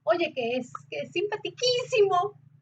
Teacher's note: es muy normal que cuando estás súper alegre y quieres decir algo oye qué es qué simpatiquísimo subas el tono